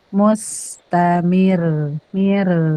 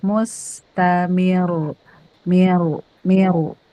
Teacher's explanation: rnya jangan ke gusi belakang, ke gusi depan.